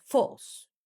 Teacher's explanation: he uses a simple fall tone, delivered flatly